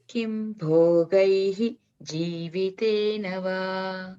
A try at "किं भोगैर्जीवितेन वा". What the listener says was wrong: Club together, that R sound will be interpolated. Kim bhogair va.